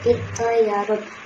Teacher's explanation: Jadi bacaan yang benar adalah dengan mengabaikan mengucapkan ta, langsung melebur ke suara to yang lebih dominan dengan memberi tekanan pada suara tebal to. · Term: idgham mutajanisain